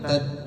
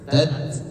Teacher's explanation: Nah, di situ ada tak sukun memiliki sifat yang namanya syiddah dan hams. Syiddah itu dia tekan, tidak mengalir suaranya.